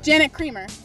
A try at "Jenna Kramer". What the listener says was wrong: No, not Janet. Jenna Kramer. You're saying Janet.